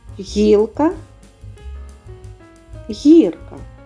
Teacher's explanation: повітря зустрічає перешкоди звучить м'яко Отже приголосний м'який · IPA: [г']